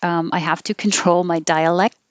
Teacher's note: tongue does have to go to the k position dialect um you don't have to release the t you would hold the t if that's the end of the sentence